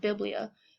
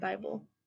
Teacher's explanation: happened was because of the Great Vowel Shift in the 1400s the e sound in Biblia and biblos became a long I sound to form the vowel sounding of Bible